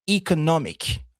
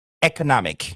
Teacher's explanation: Chez nous, en anglais américain, c'est plutôt un E, economic. Dans les deux cas, vous constatez que le stress, l'accent, se met sur la troisième syllabe.